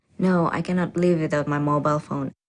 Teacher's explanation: the answer is definite, and this certainty is expressed with a flat or level tone.